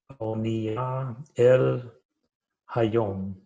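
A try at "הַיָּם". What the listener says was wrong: Hayam. Not yom, but yam.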